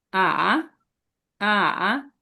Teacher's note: 3 নম্বর টোন হচ্ছে, এটাকে নিচে নেমে উপরে উঠবে, আ, আ, আ, যেমন হচ্ছে মা, আ, মা মিন্স কি হর্স, ঘোড়া। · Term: third tone